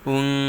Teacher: নুন সাকিনের পর ইকফার হরফ যা আসছে, তাই গুন্নাহর সহিত গোপন করে পড়তে হবে। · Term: ইকফা গুন্না